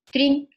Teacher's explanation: I found that there was very little voicing for D and it was almost like a T by itself